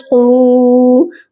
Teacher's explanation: قاف کے ساتھ واو مدہ ہے، اسی لیے قاف کو ہم ایک الف کی مقدار لمبا کریں گے